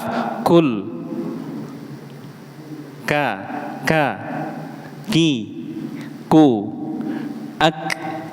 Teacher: ada suara nafas di belakangnya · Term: kaf